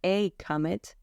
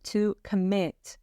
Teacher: we stress the first syllable if we're talking about a noun a comet and the second syllable when we're talking about the verb to commit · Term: word stress